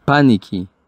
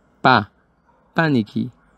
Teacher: tenemos que hacer acentuación o fuerza sobre la primera sílaba